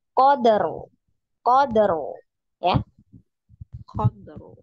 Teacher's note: Dalnya, nah, kolkolahnya jangan dijeda. Qadr, ya jangan seperti itu, tapi langsung ya, alami ya, secara langsung.